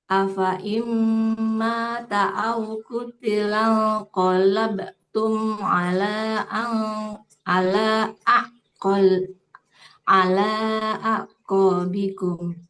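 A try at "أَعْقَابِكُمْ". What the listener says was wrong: Sempurnakan di lamnya 4 harokat Ibu ya. Ala a'qabikum.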